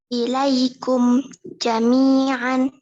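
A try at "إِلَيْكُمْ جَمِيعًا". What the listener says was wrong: Jangan kasih jeda.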